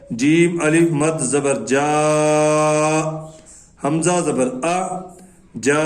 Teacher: 3 سے 4 الف کی مقدار اس کو لمبا کیا جاتا ہے. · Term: مد متصل